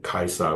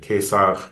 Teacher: it's really that the w sound becomes v, and the diphthong I becomes e, a monophthong